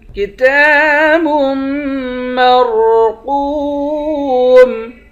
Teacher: کتاب، تا پر کھڑا زبر ہے، ایک الف کی مقدار کھینچیں گے، با کو میم کے ساتھ ملا کر میم پر غنہ کریں گے، را اور قوف دونوں کو موٹا پڑھیں گے، قوف کو واو کے ساتھ ملا کر ایک الف کی مقدار کھینچیں گے، آخر میں میم ساکن ہے۔